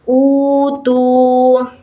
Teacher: cara bacaannya seperti mat tabi'i, yakni dipanjangkan sebanyak 2 harokat